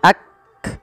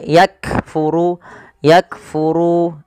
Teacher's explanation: dan sifat ee Hames cara membacanya yaitu bacaan syiddahnya dulu yaitu Kaf itu ditahan suaranya Ak baru dikasih Hames Hames itu mengalirnya nafas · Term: sifat syiddah